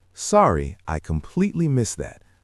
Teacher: The stress is on the word completely.